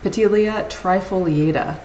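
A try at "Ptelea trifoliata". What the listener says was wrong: So the P is silent. So Telea. It's Telea.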